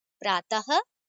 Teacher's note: इसका उच्चारण मुख से होता है और अ के बाद ह की ध्वनि निकलती है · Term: विसर्ग